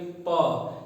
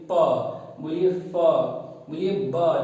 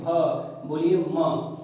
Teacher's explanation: दांत तो टच होगा लेकिन दोनों होंठ आपस में सट जाएंगे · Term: दव्योष्ठ